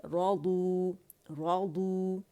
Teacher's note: را بھی موٹا ہے کیونکہ فتح کے ساتھ ہے، اور دعات تو ہے ہی موٹا ہے، رادو، رادو.